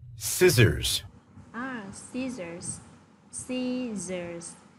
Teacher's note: Chữ sở đầu tiên của cô sẽ được phát âm là âm s. Và chữ sở thứ hai ở phía dưới này thì sẽ là âm z.